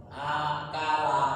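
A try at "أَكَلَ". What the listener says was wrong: Nah, lebih ini disambung lebih lancar. Ya, A sama K-nya jangan putus. Akala, bukan, tapi akala seperti itu. Ya, jadi huruf pertamanya jangan misah. Jadi nyambung semua.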